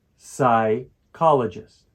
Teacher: the second syllable is the one that we stress for this word